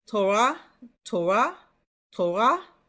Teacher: The R is a little bit from the back of your throat.